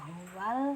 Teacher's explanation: hak yang keluar dari tenggorokan bagian bawah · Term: hak besar